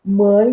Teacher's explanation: Logo, também trata-se de ditongo crescente, por ter uma vogal som longo, seguido de uma vogal som breve. No caso de mãe, por termos aí um A nasalizado, temos um ditongo nasal.